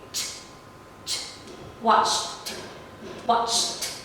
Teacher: Ta has no vibration. So it means that it is voiceless. · So again, put your 2 fingers on your throat and try to feel it. You can feel that there is no vibration, but only sound coming out of your throat.